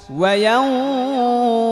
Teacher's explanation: ইয়াও গুন্না হবে, এটা ইকফা গুন্না, নুন সাকিনের পরে কফ আসছে, কফ ইকফার গুন্না।